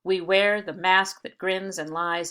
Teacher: i am exaggerating that rhythm as i read it but you can see that every other beat is stressed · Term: meter